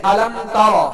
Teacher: र को पुर करते हुए ता को जो है वो पुर नहीं करेंगे। जैसे अलम ता अगर त पढ़ा र को पुर करते हुए ता को पुर पढ़ दिया तो ता त बन जाएगा और हर्फ बदल जाएगा।